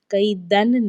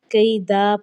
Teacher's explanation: حالت وقف میں ایک حرکت گر جاتی ہے تنوین کی، اور ہم نے کیا کرنا ہے، کئی دن نہیں پڑھنا، کئی دا پڑھنا ہے۔